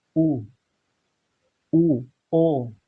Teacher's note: जो वृत्तमुखी है इसमें मुख हमारा ओठ वृत्ताकार बनते हैं, जैसे ऊ, ओ, तो इसमें देखो मुख वृत्ताकार बनता है।